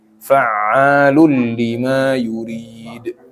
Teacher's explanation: Fa'alul lima, itu lamnya nggak usah ditahan ya, langsung aja. Jadi jangan fa'alul lima yurid, nggak usah ditahan di situ, langsung.